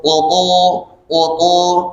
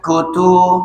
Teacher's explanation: ada sifat isti'lah, ya. Tafkhim, mulutnya penuh, qutu, berbeda dengan kutu.